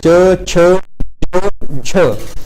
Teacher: जब च वर्ग च, छ, झ इनको हम बोलते हैं तो ये जो हमारी जीवा होती है हमारे तालु को टच करती है, तो ये हमारे तालव्य वर्ण होते हैं।